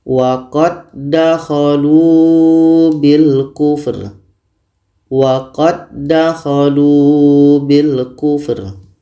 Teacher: Karena bertemu dua huruf yang sama, maka dal ini sudah sempurna masuknya kepada dal yang kedua. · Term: idgham mutamathilain